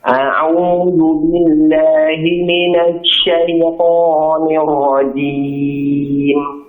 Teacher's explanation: Jangan terlalu ditekan ya, jangan a'u seperti bertasdid nanti jadinya. A'u, jangan terlalu ditekan.